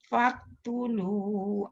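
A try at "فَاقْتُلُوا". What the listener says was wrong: Bukan faqo.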